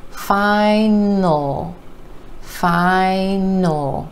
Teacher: we're going straight from the end to the L and we're holding that dark L sound